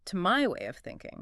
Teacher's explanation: Notice how the words of and thinking blend together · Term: linking the sounds